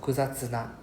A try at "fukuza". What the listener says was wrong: Less of a f sound.